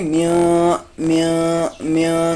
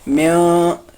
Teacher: نون کو ظاہر کر کے نہیں پڑھنا بلکہ نون کو چھپا کے پڑھنا ہے، یعنی میاں، ٹھیک ہے۔ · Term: نون کو چھپانا